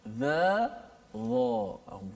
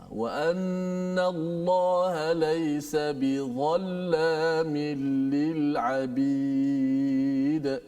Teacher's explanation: Dia bukan huruf qalqalah, ya. Tapi dia tebal, ya. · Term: huruf dha